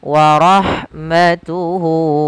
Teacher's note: Kemudian pada lafal warahmatuhu, lafal ha ketika dia sukun, maka huruf ha-nya itu dialirkan nafasnya. · Atau kalau di sini waw kecil. Maka kita panjangkan hu-nya 2 harokat. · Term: mad silah qasirah